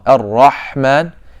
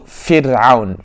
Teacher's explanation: when you're pronouncing Rahman, the back of the tongue is raised. And when you say Fir'aun, the back of the tongue is lowered.